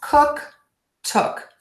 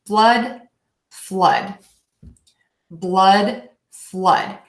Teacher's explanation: I'm a little more rounded as opposed to in blood flood